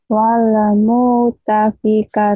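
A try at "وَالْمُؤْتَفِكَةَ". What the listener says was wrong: Jangan wala. Wal. Wal. Mu. Wal.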